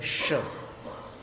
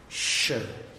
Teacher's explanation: श का उच्चारण करने के लिए आपको अपनी जीभ नीचे के दांतों के पीछे रखनी होगी